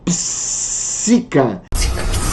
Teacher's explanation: é entoada pelos personagens como se fosse algo sibilante, de maneira sibilante, ou seja, como se uma serpente dissesse a palavra psica.